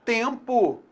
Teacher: Tempo, eu tenho nasalização do E